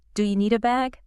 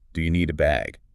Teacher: It's one compressed sound. The stress is on bag.